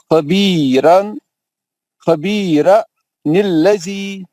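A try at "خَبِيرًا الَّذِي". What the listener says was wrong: نہیں یار، لا حول ولا قوت. بھائی وہاں پہ تنوین میں سے ایک زبر گرا دے کے آپ خبیرا.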